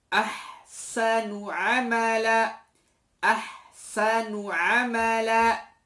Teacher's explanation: Misalkan pada kalimat ahsanu amala, ahsanu amala. Dia tidak perlu berlama-lama ketika kita menyebut nun gunnah, nun dhammah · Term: gunnah anqas